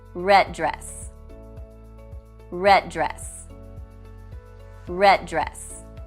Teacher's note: rather than saying the consonant sound twice, it is only pronounced once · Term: consonant-to-consonant linking